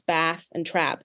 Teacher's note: in American the bath set and the trap set are merged lexical sets